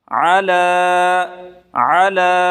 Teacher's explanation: عین کو نکال کے پڑھیں گے گلے سے